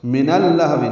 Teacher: نون کو اللہو کے لام سے ملا دیں گے، ادغام شمسی ہوگا، بیچ میں الف لام نہیں پڑھیں گے